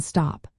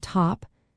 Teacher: the T sound can be pronounced as a quick, sharp T in stop. But in the word top, the T is often pronounced with a slight puff of air called aspiration, making it T-aspirated.